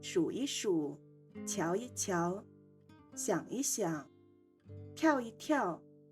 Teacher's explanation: 一在词语中间读轻声一